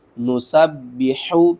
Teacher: حا کو آپ نے حلق کے درمیان والے حصے سے ادا کرنا ہے، با کو ہم نے 2 بار پڑھنا ہے.